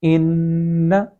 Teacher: سب سے پہلے ان، اور پھر اس کے بعد الف کو پڑھتے ہوئے ن، اور ایک ساتھ اس کے پڑھنے کی صورت ان، کن، لیکن جب حروف مدہ ان کے ساتھ نہیں لکھے گئے، نون مشدد اور میم مشدد کے ساتھ، اس وقت اس چیز کا بہت زیادہ خیال کیا جانا چاہیے کہ آواز کو ناک میں روکا تو جائے گا لیکن کھینچا بالکل بھی نہیں جائے گا۔ مثال کے طور پہ ان، تو یہاں پہ کھینچنا نہیں ہے نون کو، بلکہ تھوڑی دیر کے لیے صرف آواز کو روکنا ہے۔